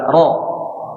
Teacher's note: sifat ro ini memiliki sifat takrir bergetar sehingga tidak benar-benar rapat menempel